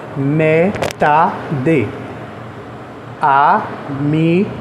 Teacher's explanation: O za de amizade e o tá de metade são as sílabas tônicas.